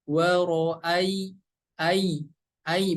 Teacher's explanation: Huruf ya berharokat sukun dibaca menjadi i ya, ingat, bukan dibaca menjadi e, tapi dibaca menjadi i.